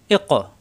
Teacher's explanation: জিব্বার গোড়া থেকে কিন্তু ধাক্কা হবে। এ ক, কফ সাকিন কলকলা।